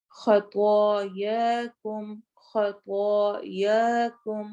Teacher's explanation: خا اور طوا دونوں ہیوی ہوں گے